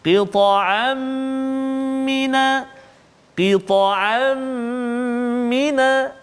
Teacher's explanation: Tanwin bertemu dengan mim. Jadi dengung juga 2 harakat.